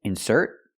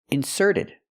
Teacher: I put the stress on the second syllable because it's a verb